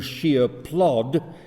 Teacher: he has two stressed words without an intervening syllable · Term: sprung rhythm